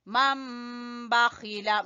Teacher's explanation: یہاں پر اقلاب ہو رہا ہے، نون کی جگہ پہ ہم نے میم پڑھنا ہے۔